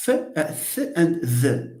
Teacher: the tongue touches the teeth. You can't say th without touching, but you don't make a close contact. You leave some air out.